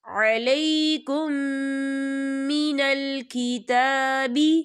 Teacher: وما انزل علیکم من الکتاب، یا دیکھیں علیکم، یہاں میم ساکن ہے اور میم ساکن کے بعد میم آ رہا ہے، تو یہاں پر ادغام شفوی ہوگا اور ہم یہاں غنہ کریں گے